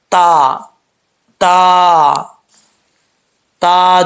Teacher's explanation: زبان کی نوک اوپر والے دانتوں کے کنارے سے لگے گی، جڑوں سے لگے گی تو تا پڑھا جائے گا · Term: تا کا مخرج